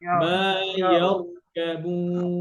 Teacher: ইয়ারকাবুন কি হবে র মোটা করে